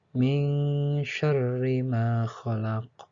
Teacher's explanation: ada hukum nun mati bertemu huruf shin. Dalam ilmu tajwid disebut dengan ikhfa. Artinya samar-samar.